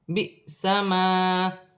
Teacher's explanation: لام ساکن ہے، لام کو قاف کی حرکت کے ساتھ ملا کر پڑھا جائے گا، الف پر حمزہ پر جزم کی حرکت ہے، حمزہ جھٹکے کے ساتھ پڑھی جائے گی